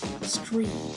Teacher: Substitution of K for T in STR clusters